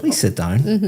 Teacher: My intonation is going up.